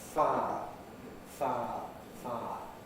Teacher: we can smooth it, losing the I element